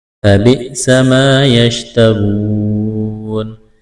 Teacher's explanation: ثَمَنًا قَلِيلًا فَبِئْسَ مَا يَشْتَرُونَ فَبِئْسَ ما الف مدہ ہے، یشترون را کو موٹا کرنا ہے، واو ساکن سے پہلے پیش ہے، واو مدہ ہے، ایک الف کے برابر کھینچنا ہے، وقف کریں گے، نون کو ساکن کریں گے۔